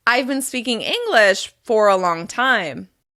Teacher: After the word English, you're going to pause slightly and perhaps take a micro breath.